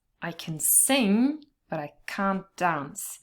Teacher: here in the positive part you only stress the verb sing but in the second part we have can't in the negative and so we do have to stress it · And the T is often lost anyway, there's elision here. So really the difference between the positive can and can't, the negative is really something you can only hear through the stress